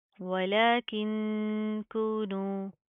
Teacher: हम इख्फा करेंगे, नाक के अंदर साउंड पैदा करेंगे